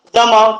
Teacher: तुम्ही उच्चार करता वेळेस आपली जीभ जी आहे दाताच्या पाठी मागील भागाला स्पर्श करते, त्यामुळं त्याला दंत तालव्य वर्ण असं म्हटलं जाते, जमाव.